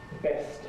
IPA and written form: best (best)